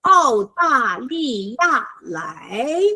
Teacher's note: 澳大利亚 is a very special word, Australia, and the first four are fourth tones.